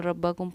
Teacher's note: रब्बकुम, इसको सिंपल रब्बकुम पढ़ा, कोई नाक में आवाज़ हमारी नहीं गई